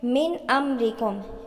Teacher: نون ساکن کے بعد حروف حلقے میں سے حمزہ آ رہا ہے تو یہاں پر اظہار ہو رہا ہے